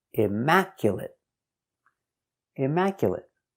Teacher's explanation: 4 syllables. The stress is on the second syllable.